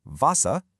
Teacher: the German W gets the English V sound. So, the word for water, vasa, sounds more like faster.